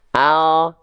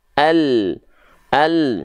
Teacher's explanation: kalau huruf L yang kita sentuhkan adalah bagian ujung akhir lidah kita saja